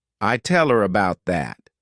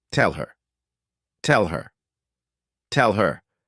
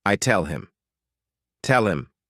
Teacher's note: when these words go unstressed, people tend to just omit the letter H and the sound that it corresponds to.